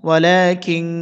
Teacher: সবর লা এক লিফ টানতে হবে ওয়ালা কাফ নুন সের কিং নুন সাকিনে পরে কাফ আসছে গুন্না করতে হবে এটি ইকফা গুন্না